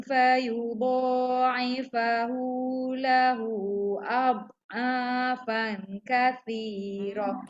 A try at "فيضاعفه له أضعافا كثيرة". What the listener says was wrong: Lahu tu panjang. 4 harakat paling kurang. Lahu panjang.